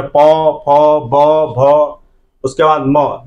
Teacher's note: प बोलते हैं तो हमारा होठ का भूमिका इसमें होता है, इसलिए जो है इसको ओष्ठीय वर्ण भी जो है कहा जाता है।